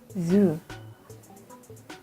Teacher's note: the sound is called voiced alveolar fricatives